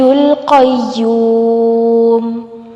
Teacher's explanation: یا کے اوپر تشدید ہے، قاف کو یا کے ساتھ جوڑیں گے۔